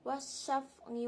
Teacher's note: alif lam syamsiah karena huruf alif lam bertemu huruf Syamsiah dibaca idgham masuk ke huruf syin